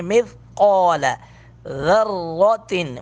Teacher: مث تھا کو نرمی کے ساتھ ادا کریں گے، قوف کو پر کر کے پڑھیں گے